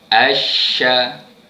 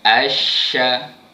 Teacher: Tengah-tengah lidah, naik ke langit keras belah atas. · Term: huruf shin